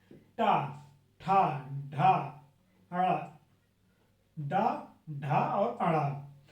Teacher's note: बोलते वक्त जीभ क्या हो रही? मुड़ जा रही। कहां पे? तालू पे लग जा रही है, हवा नहीं निकल पाती है। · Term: मूर्ध व्यंजन